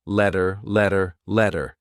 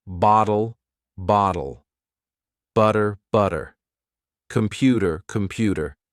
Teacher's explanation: if you have a letter T in the middle of a word sometimes you pronounce it as d